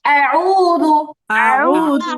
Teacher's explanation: এখানে টান হচ্ছে এক আলিফ, তাহলে আমরা সর্বোচ্চ আমরা কি করব, 2টা হরকত পরিমাণ আমরা টান দিব। 2টা হরকতের সময় পরিমাণ আমরা হচ্ছে এটাকে টান দিব, বেশি টান দেওয়া যাবে না।